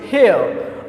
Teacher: The next one is the combination of E and schwa sound